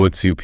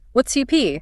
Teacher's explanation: It blends together into something that sounds more like what's you pee. You hit that second syllable.